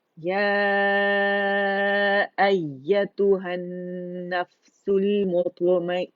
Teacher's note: تائی مربوطہ کی آواز کو ہم نے ہا ساکن میں چینج کر دینا